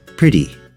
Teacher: your tongue should be between its D position and its hard T position when it goes to make the flap T sound · it's actually in between the sound of the T and the sound of the D